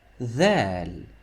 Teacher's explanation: with Dhal, you feel like you have to show your tip of your tongue out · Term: TH sound